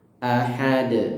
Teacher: kemudian ha-nya tipis di sini, ha seperti ada aliran nafas tipis, ahad. Dan terakhir huruf dal yang di akhir ayat yang diwakaf di situ, sehingga dia harus disukun dan harus dipantulkan ya, dengan pantulan kuat.